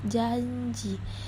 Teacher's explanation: di sini pengucapan nya seperti pada kata di sebelahnya yaitu janji ada Y di situ karena J itu letaknya ada di palatal